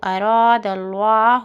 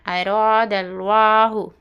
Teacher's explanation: لفظ اللہ سے پہلے زبر ہے اس لیے ہم موٹی آواز کے ساتھ پڑھنا